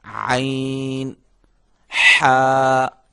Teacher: ان دونوں کی نکلنے کی جگہ جو ہے وہ ایک ہے, ان کا دونوں کا مخرج ایک ہے